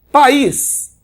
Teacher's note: Porque país, eu tenho aqui, ó, vogal, né? O I sendo pronunciado com a mesma intensidade do A. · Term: Hiato